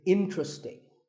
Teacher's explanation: there are only three syllables sting and the stress is on in · This is mispronounced sometimes as interesting, but there are only 3 syllables, in-tra-sting, and the stress is on in, so the word is interesting.